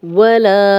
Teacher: لا کو 2 حرکات لمبا کریں گے، الف مدہ ہے